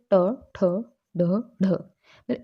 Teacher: जब जीवा की उल्टी हुई नोक का निचला भाग मूर्धा से स्पर्श करता है, तो ऐसी स्थिति में जो ध्वनि उत्पन्न होती है वो क्या कहलाती है, मूर्धन्य व्यंजन कहलाती है।